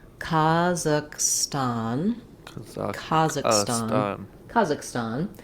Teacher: some secondary stress on the ston syllable because it does have that clear vowel